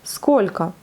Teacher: Сколько, vous voyez, à la fin c'est un O, on le lit comme un A, puisque le premier O seulement est accentué